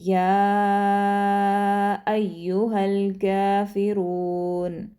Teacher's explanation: इसको जो आपने मेक श्योर करना है कि या को आपने कम से कम 3 से 4 अलिफ के बराबर लंबा पढ़ना है, और यू जो है उसको सख्ती से पढ़ेंगे क्योंकि उस पर तशदीद है। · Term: मद्दे मुत्तसिल